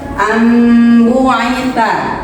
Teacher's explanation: nun sukunnya dan tanwinnya dibaca menjadi huruf mim